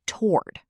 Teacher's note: In American English, most people pronounce this as one syllable, toward. It's almost like the first O doesn't exist.